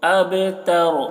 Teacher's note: با میں قلقلہ، اب تر رو کو پور پڑھیں گے